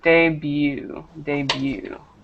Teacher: that t is silent